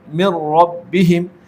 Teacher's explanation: اس نون ساکن میں غنہ نہیں کریں گے، نون ساکن کو را میں ملا کر ادغام کریں گے